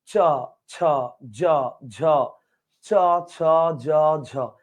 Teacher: খেয়াল করেন চ ছ জ ঝ চ ছ জ ঝ উপরের তালুতে জিহ্বার মাঝখানটা ঘসা খেয়ে খেয়ে উচ্চারিত হবে তো তালুতে ঘসা খেয়ে উচ্চারিত হয় বিধয় এটার নাম তালব্য বর্ণ আর ঘসা খেয়ে উচ্চারিত হয় বিধায় এটাকে ঘৃষ্ট বর্ণ বলা চলে